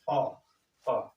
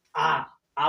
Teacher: ह्रस्व स्वर अ कम समय लग रहा है, दीर्घ स्वर आ बोल रहे हैं तो उससे ज्यादा समय लग रहा है